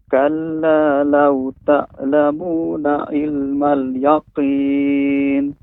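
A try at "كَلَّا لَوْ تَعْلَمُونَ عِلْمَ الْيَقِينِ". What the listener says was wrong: Walaupun ainnya kembali lagi Pak, ainnya tak. Nah, seharusnya apa? Ta. Dia lebih manjang deh Pak. Ta. Kalla law ta'lamuna ilmal yaqin. Nanti terus berlatih Pak ya, pengucapan huruf ain, terus berarti di rumah, terutama misalnya kasroh, ilmal, sehingga tidak menjadi huruf a, ilmal.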